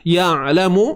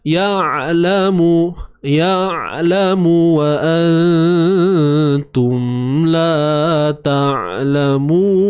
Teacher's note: Hu baris depan, hu. Ya'lamu, huruf ain matikan, sifat tawassut. Okey, alirkan suara.